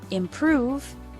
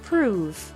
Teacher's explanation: the word improve has the stress on the second syllable